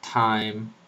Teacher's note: cuando hablan castellano eh porque ellos la pronuncian al violar y a veces cuando está principio de palabra lo pronuncian con aspiración fuerte como en inglés